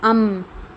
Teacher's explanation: جب ہم کہتے ہیں تو ہمارے دونوں ہونٹ مل رہے ہیں، دونوں ہونٹ مل رہے ہیں، تو میم کا مخرج ہے دونوں ہونٹوں کا ملنا